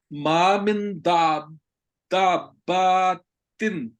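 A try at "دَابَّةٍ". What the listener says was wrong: نہیں، دا یہ چھ حرکت کے برابر لمبا ہوتا ہے جب مد کے بعد دابا با دابتن، جی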